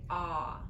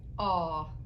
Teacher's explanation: in Missouri we have two ways of pronouncing the O. The sound is ah, and then there's an aw.